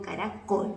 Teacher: Lleva la mayor fuerza de voz en la última sílaba. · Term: palabra aguda